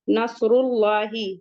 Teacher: لام پہ مد حکمی 2 کاؤنٹ الانگیٹ کریں گے۔ نصر اللہ، ہا حلقی سے ہے، سمپل پڑھیں گے۔